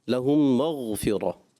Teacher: غین میں کلکلا نہیں کرتے پیارے بچوں، یہ خیال رکھتے ہیں